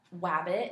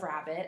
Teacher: Like the R sound, she was substituting a W for, so it might sound like wabbit instead of rabbit.